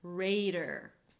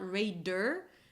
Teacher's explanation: the D is a very light D. Don't pronounce a hard D because it's between two vowels. So it's not 'reiDer', but 'reider'.